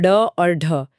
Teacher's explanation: सातवां प्रकार है उत्क्षिप्त या द्विगुण व्यंजन और ड और ढ। इसमें जीभ झटके से ऊपर जाकर तुरंत नीचे गिरती है।